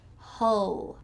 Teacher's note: This is a short U like bus.